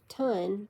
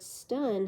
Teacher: the t is pronounced with a slight Puff of air after it after it like it very lightly pronounced H this puff of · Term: aspiration